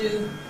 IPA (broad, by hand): duː